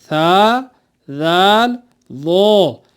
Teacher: زبان کو دونوں دانتوں کے بیچ میں دبایا نہیں جاتا، بلکہ زبان کی نوک کو اوپر کے دانتوں کے کناروں سے لگایا جاتا ہے۔ اور یاد رکھنے کی ایک اور بات تھی کہ ان کو نرمی سے پڑھا جاتا ہے، سیٹی نہیں بجائی جاتی، سختی نہیں کی جاتی ان 3 حروف میں۔ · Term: حروف لثویہ